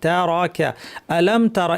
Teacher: আলাম তারাকা, তারাকা, আলাম তারা, এখানে অনেকে ভুলে আমরা টেনে ফেলি তারা, আলাম তারা কাইফা, না, তারা টানবো না। এখানে একটা জিনিস খেয়াল করেন যে র এর পরে কোনো আলিফ নেই, কোনো টান নেই। র এবং কাফ, কাফ যদিও দেখতে পাচ্ছেন আপনার পরের শব্দে আছে, পরের শব্দে আছে, কিন্তু যখন আমরা তেলাওয়াত করব মাঝখানে যেন কোনো অনাকাঙ্ক্ষিত গ্যাপ না পড়ে, এই জন্য আমরা কল্পনা করব যে তারাকা একটা শব্দের মতো।